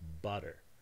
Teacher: the sound here is not a stop but rather an alveolar tap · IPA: [ˈbʌɾər]